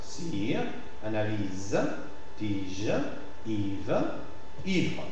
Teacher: la prononciation de i prend un tout petit peu plus de temps c'est une prononciation légèrement allongé en position tonique et devant les